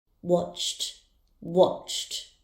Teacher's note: The verb watch has a sound ending in ch, so the ed ending will be pronounced as t